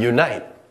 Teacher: there's a slight yeah sound at the beginning so we begin it with our yeah phoneme and then we continue on you as in ooh Eun n